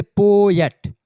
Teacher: पोएट बोलने में पो पर ज्यादा फोकस करते हैं, एट पर कम फोकस करते हैं। ठीक है, तो यहाँ पर स्ट्रेस्ड सिलेबल आ जाता है।